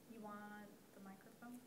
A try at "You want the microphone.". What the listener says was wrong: So taper it down. One's a question, one is a statement. We want the statements.